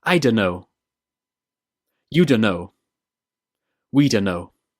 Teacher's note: This is a contraction of don't know. The t in don't gets dropped and the 2 words join together to become dunno.